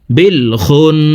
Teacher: ওয়াজিব গুন্নাহ দেখুন হরকতের বামে নুনের উপরে তাসদিদ আছে এই কারণে পেশওয়ালা খটি তাসদিদওয়ালা নুনের সাথে 3 সেকেন্ড পরিমাণ গুন্নাহ করে পড়ব